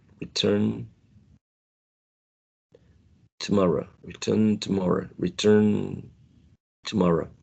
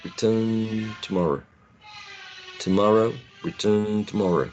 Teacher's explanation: Probably t becomes a little bit nasalized, maybe a little bit nasalized.